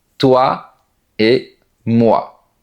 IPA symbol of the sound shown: wa